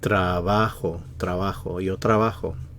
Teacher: Stress is on the va.